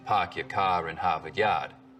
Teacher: The stereotypical Boston accents, of course, are non-rhotic, meaning no R sounds in park your car in Harvard Yard.